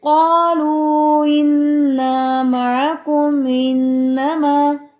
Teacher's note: दरमियान में हमजा drop, वीक कर देते हैं उसे